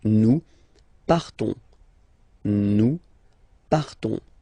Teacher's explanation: Okay, so the same phonetical form for these persons, but then obviously and of course for nous it will be different. So classic ending ONS, you don't pronounce the S, you just have this on sound nasal